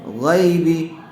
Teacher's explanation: یا ساکن سے پہلے زبر آیا ہوا ہے، لین کا قاعدہ ہوگا، اس کو جلدی اور نرم آواز سے ادا کریں گے